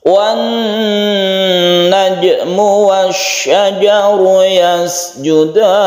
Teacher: Nun yang bertasydid ini bentukan dari idgham syamsiyah sehingga dia itu bertasydid, membacanya sebagaimana gunnah musyaddadah, artinya didengungkan.